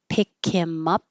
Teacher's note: Get rid of the H and him, pick him up.